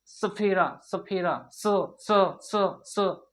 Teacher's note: दांत पर दांत भी टच होगा और जाके जीभ जो है पीछे से दांत को टच करेगा। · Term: दंत स